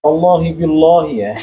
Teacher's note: lalu Jalal huruf Allahnya tebal Allah huruf lam huruf lam ini ketika keadaan kasr jadi bacaannya tipis